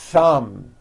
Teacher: Notice how long I'm holding the th sound.